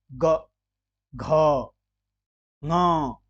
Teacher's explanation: ठीक उसी प्रकार ग, घ, ङ, तो ग अल्प प्राण है, घ ये महाप्राण है और ङ ये भी अल्प प्राण है। परंतु ग, घ, ङ इनमें स्वर तंत्रिकाओं में कंपन सा महसूस हो रहा है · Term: घोष